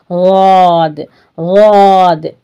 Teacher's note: जबान ऊपर भी जाएगी और साइड में 5 दाढ़ों को भी लगेगी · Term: ज़ाद